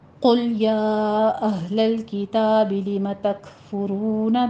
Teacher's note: کاف کے اوپر ہمس کریں گے